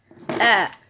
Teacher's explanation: I have to close the two vocal cords, then open it, because it is a Hamza fatha.